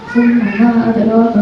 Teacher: Mim dan nun yang bertasdid itu dibaca gunnah ya.